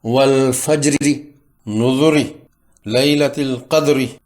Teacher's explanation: اس زیر کو جو را کے نیچے ہے 1/3 کی مقدار میں ادا کریں گے اور یہ باریک را ہوگی